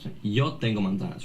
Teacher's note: Like, I'm not that great at Spanish, but your pronunciation of the word apple seemed a little bit weird to me. Yeah, he pronounced the Z in a voiced way, which is not a way that it's pronounced in Spanish